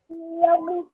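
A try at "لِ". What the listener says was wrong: Okay, again, this is a lam, yes, but what does it have underneath it? A kasra. So how would you say this? Li, yes. Okay, make sure you pay attention to the word in the middle so that you don't miss out on what symbol it has. It has a kasra on top of it, so it would be a li.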